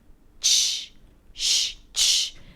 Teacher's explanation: And the /ch/ sound is an affricate. So you block the air with a T, in a way, think about it - /t/. And then you release it into a /sh/ sound: 'T+SH'. That's the main difference.